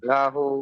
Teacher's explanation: লামটা টান হবে না, আর হাটা টান হবে।